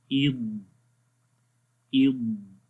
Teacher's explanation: یہاں پر آواز بالکل بند ہو جائے گی اور آواز مطلب کہ جو آپ کی زبان ہے یہ تھوڑی سی موو ہو کر آگے تک آئے گی. زبان فرنٹ کے جو دانت ہیں ان کی جڑوں تک آ جائے گی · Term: استطالت